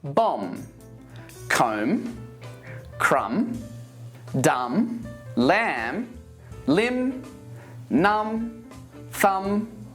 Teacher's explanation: the silent B when it's after M